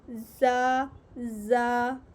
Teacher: ज़बान की नोक सनाया सुफला के किनारे से टकराने के साथ सनाया अलिया के भी लगे तो ये हरूफ अदा होता है · ठीक है, तो अदा करें ज़ा, सख्ती भी आनी चाहिए, ज़ा को अदा करते हुए सीटी की आवाज़ भी आनी चाहिए